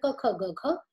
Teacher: अब वाग्यंत्र से, जैसे आप जब व्यंजन का प्रयोग करते हो तो आप देखो, हमने जो व्यंजन की शुरुआत की है क ख ग घ, तो यह कंठ से आता है, तो वो कंठ शब्द, कंठ व्यंजन कहे जाते हैं। क का उच्चारण जो है क ख ग घ, ये कंठ से आता है। कंठ ये वाग्यंत्र है।